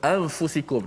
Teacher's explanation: Gunnah hanya kekal pada huruf nun, huruf pertama, huruf nun di hidung. Okey. So bila kita kata anfusikum, nun bertemu dengan fa. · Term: ikhfa